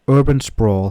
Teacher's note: stress the first syllable in urban and the second syllable in sprawl for cl practicing these example